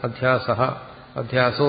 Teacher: വിസർഗത്തിന് ശേഷം വ്യഞ്ജനാക്ഷരങ്ങൾ എല്ലാം വരുമ്പോഴല്ല, ചില വ്യഞ്ജനാക്ഷരങ്ങൾ വരുമ്പോൾ ആ വിസർഗം ഓ ആയിട്ട് മാറും.